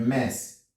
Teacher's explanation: The s as in the word mess is not voiced.